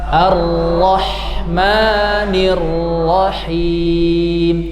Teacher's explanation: Ra berharakat tasdid, dia harus ditahan, ya. Jangan buru-buru lepas.